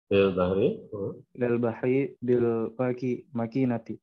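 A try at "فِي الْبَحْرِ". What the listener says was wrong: Itu fil bahri ya, bukan mil.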